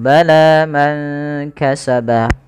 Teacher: panjangkan huruf lanya sepanjang dua harakat karena La Di sini ada Alif kecil yang datang setelahnya dan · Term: Mad